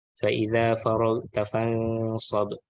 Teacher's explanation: for Ikhfaq Haqiqi actually it's just nasalization, or we call dengung.